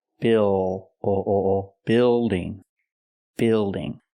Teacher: the word is not pronounced buing it's pronounced Bill building building use the short I sound like this is plus the dark L